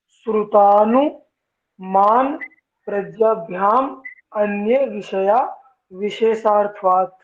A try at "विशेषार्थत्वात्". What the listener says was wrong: विशेषार्थत्वात्, थत्वात्, हाँ वो था है, था को पूरा बोलना है, ठीक है।